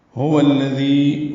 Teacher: واو کو لام سے ملا دیں گے اور دال نرمی سے پڑھیں گے